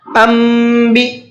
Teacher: نون ساکن کے بعد میں اگر با ہوتا ہے تو وہاں ایک چھوٹا سا میم بنا ہوا ہوتا ہے، مطلب یہ ہے کہ اب یہاں پر نون کی جگہ پر میم پڑھا جائے گا